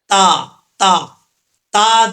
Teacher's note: تا، اس کا مخرج ہے زبان کی نوک اوپر والے دانتوں کی جڑوں سے لگے، تا پڑا جاتا ہے